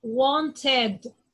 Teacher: The ed is going to be like ed, like id.